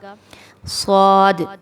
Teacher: صاد خوب موٹا حرف ہے، حروف مستعلیہ میں سے ہے، اس کو موٹا پڑھا جائے گا۔ اور واضح ری، باریکی سے پڑھا جائے گا را کو۔